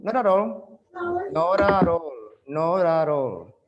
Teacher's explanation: you have a link in between the consonant and the vowel